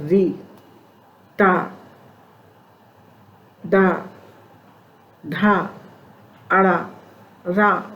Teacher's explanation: ऋतु रसाणाम मूर्धा के अंतर्गत री, टा, डा, ढा, अड़ा, रा और पा वाला शा का उच्चारण स्थान मूर्धा है